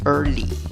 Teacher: La sílaba que lleva la fuerza de voz es la primera, contando de izquierda a derecha. En la primera sílaba, la vocal no es E ni es A, es schwa. La que no es ni E, ni A, ni E, ni O. · Y en la segunda sílaba, la palabra termina con una Y y la pronunciación es con una I larga, representada por esa E con el sombrero arriba.